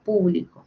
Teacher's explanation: tenemos ahí el énfasis en la U